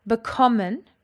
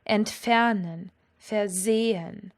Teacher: Bekommen has got its emphasis on the second syllable.